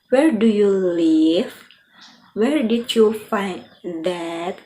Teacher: With these types of a question that can be answered with just yes or no, your pitch typically fall at the end of that question, like there's a period